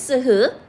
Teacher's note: 마찰로 소리가 나는 게 마찰음